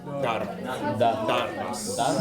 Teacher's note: There's no long vowel, so you want to get to the R quickly.